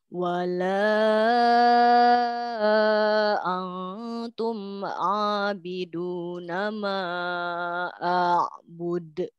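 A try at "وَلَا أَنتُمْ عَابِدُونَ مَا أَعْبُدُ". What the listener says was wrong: Oke, pada kata antum masih terlalu dekat ke bunyi ang. Untuk huruf nun, nun sukun kalau bertemu dengan huruf ta, maka bunyinya itu lebih dekat ke bunyi n. Jadi bukan huruf n, hanya dekat ke bunyi n. Contohnya, antum, antum.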